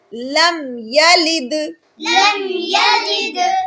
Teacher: یہاں پر دال حروف قلقلہ میں سے ہے، اس لیے ہم اس کو ذرا زور لگا کر پڑھیں گے، اظہار کے ساتھ اس کو پڑھیں گے۔